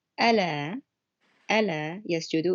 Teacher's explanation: It's a lighter L sound, and it changes the meaning.